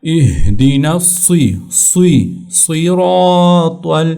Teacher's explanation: یہ صاد اس کا سین نہیں پڑھنا، بعض لوگ اس کو باریک سا پڑھتے ہیں